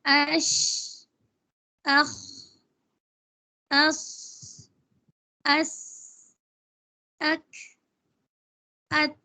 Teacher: ہم ادا کر رہے ہیں تو اس لفظ کو ادا کرتے وقت مخرج میں آواز بہت کمزور اور پستی کے ساتھ جو ہے وہ ٹھہرتی ہے کہ سانس جاری رہتا ہے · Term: ہمس